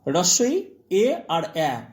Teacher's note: এই তিনটেকে বলছি আমরা সম্মুখ স্বরধ্বনি